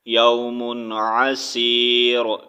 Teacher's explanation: اب یہاں پر ہم رکیں گے تو را کو ساکن کریں گے